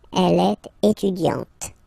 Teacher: you don't really insist on the E, but you insist quite much on the T